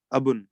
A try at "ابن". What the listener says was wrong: با پہ تشدید نہیں لگنی چاہیے.